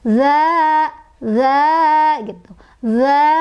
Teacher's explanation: Sebabnya karena ada alif, ada huruf mad, ya, sebelumnya didahului oleh huruf yang berharokat fathah, yaitu zalnya berharokat fathah, ya. Jadi, cara bacanya adalah dipanjangkan 2 ketukan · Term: mad thobii